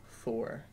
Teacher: all my THs come out as Fs just because it's less effort